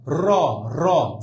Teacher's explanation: জিহ্বার আগা এই যে আমার যে মূর্ধা ওইখানে কিন্তু একাধিকবার, একবার না কিন্তু একাধিকবার টোকা মারে, অনেকবার। র র জিহ্বাটা আপ ডাউন করে না, একটু বাড়ি খাচ্ছে না মূর্ধার সাথে, এই জন্য রটাকে বলা আছে কি কম্পিত ব্যঞ্জন।